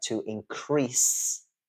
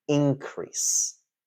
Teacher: the verb form is stressed on the second syllable and the noun form is stressed on the first syll but